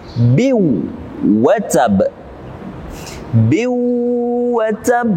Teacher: Jadi kita langsung masuk kepada huruf waw tanpa membaca kasrotani dengan bin, tapi biw watab, biw watab. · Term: idgham bi gunnah